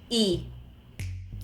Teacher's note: notice also how I closed my mouth a little bit more so it's not as open as a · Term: letter e